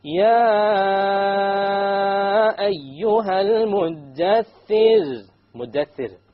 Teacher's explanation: Light, because of the kasra before it.